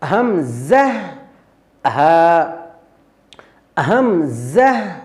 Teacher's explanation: আকসাল হালক বলতে কণ্ঠনালীর দূরবর্তী স্থান বা হলকের দূরবর্তী স্থান এই আকসাল হালক থেকে দুইটি হরফ উচ্চারিত হয় বা দুইটি অক্ষর